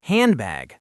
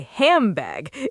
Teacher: Nobody says hand to bag. The D disappears. Malision. And the N turns into an M.